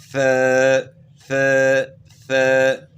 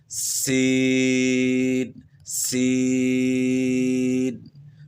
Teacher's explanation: ثا جو ہے زبان کی نوک سامنے والے اوپر کے 2 دانت جو ہیں ثنایا علیا، ان کے کنارے کے ساتھ جو ہے نا زبان کی نوک لگے گی۔ ث، ث، ث، نیچے دانتوں کے ساتھ زبان کو ٹچ نہیں کرنا، نیچے دانتوں کے ساتھ زبان ٹچ کریں گے تو پھر سین کی آواز بنتی ہے۔